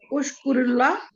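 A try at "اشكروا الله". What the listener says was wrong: अच्छा, इसको कहेंगे उशकुरू। ठीक है, इसको थोड़ा सा उशकुरू पढ़ेंगे ताकि ज्यादा की बात है ना, उशकुरू वाव को लंबा करेंगे।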